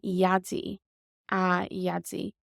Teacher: this D here changes to a Y sound when it has a séimhiú added to it